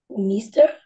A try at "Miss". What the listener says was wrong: Não, não. Vai falar só com som de S. Miss. Então, o som desses dois S é um S.